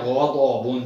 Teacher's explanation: दौद को मोटा, आपकी ज़बान मुंह के अंदर फैल जाएगी, ग़ज़ाबुन, दाढ़ों के साथ लगेगी, दाएं या बाएं, ग़ज़ाबुन।